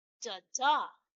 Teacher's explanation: First one is what we call iamb or iambic in its descriptive form. Its arrangement is unstressed and stressed.